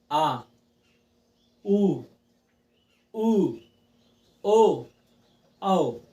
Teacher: जो हमारे जीभ के पिछले हिस्से से बोले जाएं, ठीक है, उन्हें हम क्या कहेंगे? पश्च स्वर कहेंगे। प से पश्च स्वर, प से पीछे के हिस्से से।